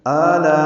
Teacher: میں آ میں مد بدل ہے، یہ 2 حرکات لمبا ہے، لا میں الف مدہ کے بعد حمزہ آنے کی وجہ سے مد متصل ہے، ہم اس کو 4 حرکات سے زیادہ لمبا کرتے ہیں